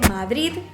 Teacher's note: Ellos intentan marcar ese sonido D final, pero por influencia del catalán terminan pronunciando una T al final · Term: Madrid terminado con T